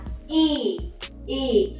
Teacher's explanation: Đối với nguyên âm dài thì ví dụ như là âm này chúng mình sẽ đọc là i, i. Nó hơi dài và nó hơi cao một tí các bạn nhé